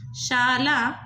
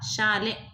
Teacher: ಲ ಇರೋದು ಲೆ ಆಗ್ತಾ ಇದೆ ಅಂದ್ರೆ ಅ ಇರೋದು ಎ ಆಗ್ತಾ ಇದೆ